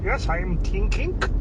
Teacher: the k is the unvoiced version of the g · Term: classic comedy german accent